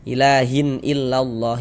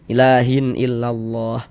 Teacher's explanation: Perhatikan tuh, huruf hamzah termasuk salah satu huruf idhar halqi. Maka bunyi tanwinnya dibaca jelas dan tidak berdengung.